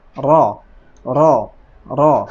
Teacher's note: Ra ini karena berharokat fathah, maka dihukumi tafkhim, tebal, dibaca tebal